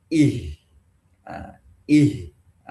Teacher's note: H ini tidak boleh masuk suaranya ke dada. Karena makhraj huruf H bukan di dada. Ya hanya tenggorokan bagian bawah. Ya, belum masuk ke dada.